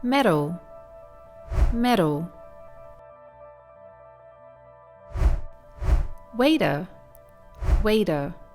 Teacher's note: When there's a T between vowels, Americans tend to pronounce it the same way as they do when there's a D between vowels. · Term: flap T